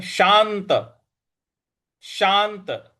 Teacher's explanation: शांत श के बाद जो आधा न है उस पर हमको बल देना है।